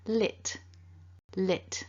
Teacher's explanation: we've got a short I and an unvoiced T